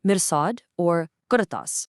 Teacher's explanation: Now, because the Arabic language absolutely loves surprises, there are 5 exceptional words in the Quran where the ra is heavy even though there's a kasra before it because it's followed by a heavy elevated letter